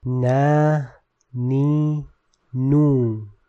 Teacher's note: Note that the lisani component of noon is always light or in tarqiq.